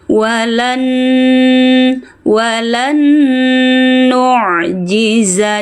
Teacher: nun sukun ketemu nun, ya. Idgham bighunah. Masukkan suara dengungan.